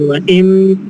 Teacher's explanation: Nunnya masuk sempurna ke huruf mim, gitu ya. Jadi wa im langsung, seolah-olah nun itu nggak ada. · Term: idgham kamil